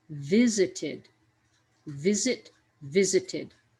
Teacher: for visit that stress comes at the beginning of the word